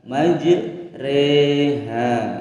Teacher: Di sini ada huruf ra berharokat fathah berdiri, tidak dibaca ra melainkan diimalahkan atau dimiringkan harokatnya antara fathah dan kasrah menjadi majreha.